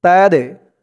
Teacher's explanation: দালটা কলকলার হরফ ধাক্কা দিয়ে পড়তে হবে